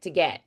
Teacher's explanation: It's almost like that dentalized T with like a D mixed in